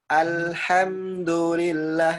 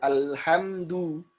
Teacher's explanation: Nah, meskipun dalam segi makna tidak berubah, tapi kurang tepat dalam segi kaidah kan gitu kan. Nah, dhammah ya mencucu ya. Jangan sampai jadi o.